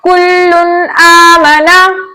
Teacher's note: 2 पेश की तनवीन के बाद हुर्फ हल्की में से हमजा आया तो हमने 2 पेश की तनवीन के नून को इसके मखरज और सिफात के साथ खूब जाहिर करके पढ़ा